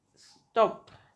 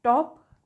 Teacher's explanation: When you produce top, you should feel a puff of air that does not occur with stop. When you say stop and when you say top, so that's a for top, that there will be puff, and when you say stop, no puff. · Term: aspiration